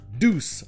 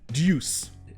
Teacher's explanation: en anglais britannique ça se prononce deuce, comme s'il y avait le son ye juste après le D.